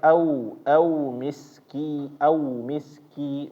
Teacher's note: Wau ketika mati jangan dia mendekati bacaannya itu menjadi o.